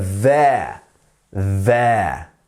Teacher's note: your tongue is going to your top teeth and you're making a buzzing sound as the air slowly passes through the teeth